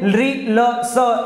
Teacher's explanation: छोटा वाला स दंत पे आ गया। तो याद रखिए लि ल स, ये क्या हो जाता है, ये दंत हो जाता है।